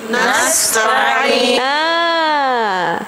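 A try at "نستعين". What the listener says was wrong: Tadi bunyinya nas ta'in kan? Nasta'in.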